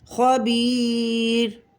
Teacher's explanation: یا ساکن سے پہلے با کے نیچے زیر یا مدہ ایک الف کے برابر کھینچ کر پڑھیں گے، اور یا مدہ کے بعد والا حرف وقف کی وجہ سے ساکن ہو رہا ہے، تو یہاں 3 الف کے برابر اس یا کو ہم کھینچ کر پڑھیں گے